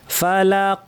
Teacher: ফা বলার সময় প্রচুর বাতাস আওয়াজ থাকবে।